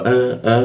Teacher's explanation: huruf a ini ditenggorkan bagian bawah